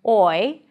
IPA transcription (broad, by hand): ɔɪ